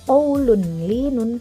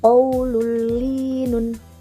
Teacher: Jadi bukan qaulun linun, tapi kita idghamkan qaulul linun. Nah, bacaannya menjadi menyatu tapi tanpa dengung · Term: idgham bila gunnah